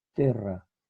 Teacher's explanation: Latín vulgar, esta E breve corresponde a una E abierta. Ahí está una E abierta.